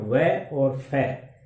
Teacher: तो वह, एक तो वह है, और एक ये जो अरबी फारसी में प्रयुक्त होता है फै, फै को बोलते हैं, वह को हम बोलते हैं तो हमारे नीचे का ओठ और ऊपर के दांत, इनका मिलन होता है, इससे इनका उच्चारण होता है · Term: दंतोष्ठ्य वर्ण